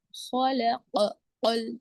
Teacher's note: آگے سے دونوں میں آپ نے یہاں پر دونوں میں خلق یعنی حروف مستعلیہ ہے خا اور قاف، موٹے پڑے جانے والے حروف